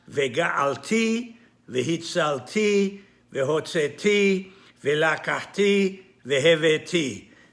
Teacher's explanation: The emphasis is always on the last syllable, and this is called milera.